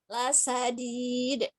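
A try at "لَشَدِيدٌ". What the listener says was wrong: Masih sa itu, bukan sa. Sya, belum. Lasya. Sya, Harus nyebar banget. Ya, lasya. Lasya. Ya, lasyadid. Ini shinnya nanti PR. Sya. Bukan sa.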